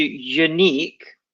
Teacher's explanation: it is not a pure U. It's y. It's with almost like a Y sound.